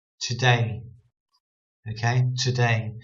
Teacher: Because we're putting the emphasis on day, on the syllable, two syllables. We're putting the emphasis on the second syllable, day.